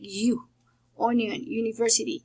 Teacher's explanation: it is called the voiced palatal approximant, and it's a semi-vowel